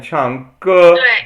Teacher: 唱 歌 is fourth tone, right? 唱 and then 歌 is 一 声.